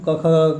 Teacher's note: क वर्ग का उच्चारण स्थान कंठ, क ख ग का कंठ